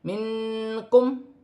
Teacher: نون ساکن میں اقفا ہوگا کیونکہ کاف حرف اقفا میں سے ہے